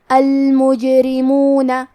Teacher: کلمت المجرمون میں حرف الجیم ہے اور اس پہ جزم ہے، لہذا ہمیں جیم کو قلقلہ سے پڑھنا ہے اور قلقلہ کا معنی ہے حرف ساکن کو ہلانا، تو ہم جیم کو ہلاتے ہوئے یہ کلمہ کو پڑھیں گے المجرمون.